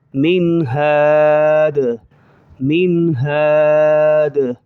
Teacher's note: یہاں غنہ نہیں ہو رہا کیونکہ حروف حلقی سامنے آ رہا ہے